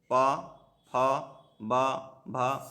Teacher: दंत ऊपरी दांतों के निकट से इसका उच्चारण स्थान है ये, और इसका वर्ण नाम दंत है, जिसके अंतर्गत तवर्ग आता है, ता, था, दा, धा और ना। ओष्ठ दोनों ओठों को मिलाकर बोला जाता है